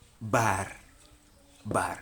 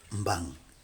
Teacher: the low falling tone, which is represented by the word bar